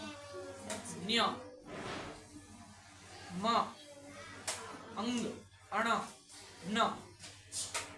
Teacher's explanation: આ 5 અક્ષર નાકમાંથી બોલાય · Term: નાસિકા